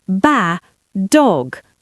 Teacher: You say bad dog. You hold the position of the D, pause for a split second to build pressure, and then release it onto the second word.